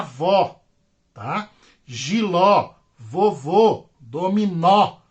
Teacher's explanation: a última sílaba é a mais forte e a tônica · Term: oxítonas